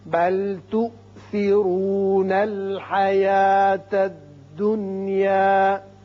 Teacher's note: یہ حمزہ جھٹکے سے پڑھا جائے گا، تؤثرو را پر ہوگا۔